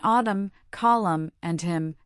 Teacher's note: In autumn, column, and hymn, the N is silent, and the M sound stands alone.